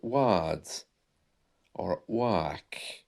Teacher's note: the r is silent heart and that's something which is prevalent in received pronunciation